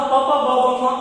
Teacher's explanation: ಈ ಅಕ್ಷರಗಳನ್ನು ನಾವು ಉಚ್ಚಾರಣೆ ಮಾಡಬೇಕಾದಾಗ ಎರಡು ತುಟಿಗಳು ಸ್ಪರ್ಶ ಆಗ್ತವೆ. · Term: ಓಷ್ಟ್ಯ